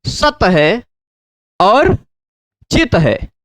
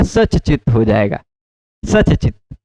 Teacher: त को बोलने के लिए आपको दांत तक जाना पड़ेगा, है ना, और च को बोलने के लिए दांत से थोड़ा सा ऊपर वाली जगह पर जाना पड़ेगा। तो जीभ को दांत तक पहुंचाना मतलब थोड़ा दूर यात्रा करवाना, और जीभ को दांत से थोड़ा सा ऊपर यानी और नजदीक ही रहना।